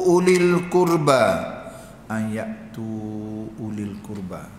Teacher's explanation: Wau tu tak boleh. Penulisan ada tapi baca tak boleh panjang